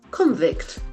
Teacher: This has got two pronunciation based on the grammatical position. If it is a noun, the accent falls on the first syllable.